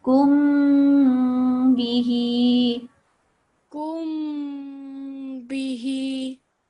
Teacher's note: you don't prolong the kaf, prolong the meme